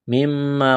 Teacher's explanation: غنہ کریں گے آواز ناک میں چھپائیں گے